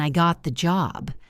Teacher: The pitch went up and sounded bright. That signals victory.